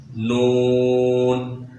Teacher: जब हमारी ज़ुबान का सामने वाला हिस्सा ऊपर वाले सामने के दांतों की मसूड़ वाली जगह पर लगेगी, उससे जो आवाज़ निकलेगी वही आवाज़ इस नून की है।